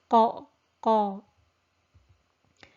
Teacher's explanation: we have a strong echo sound in the mouth, and we also have narrowing in the throat area for the qaf. So the articulation point of the qaf is the back of the tongue, so that's the furthest point of your tongue touching the soft palate.